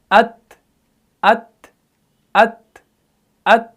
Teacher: ता को भी आपने सख्ती से अदा नहीं करना है, बिल्कुल आपने इसको नरमी से और एयर फ्लो को पास करना है।